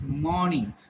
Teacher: you're getting it aw, where you feel that there is a r sound, but it is not pronounced. People will feel that there is a r sound, but it is not pronounced at all. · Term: Long aw